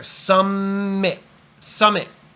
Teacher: there's only one M sound it goes together